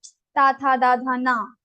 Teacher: These letters will be pronounced from your danta, teeth. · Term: dentals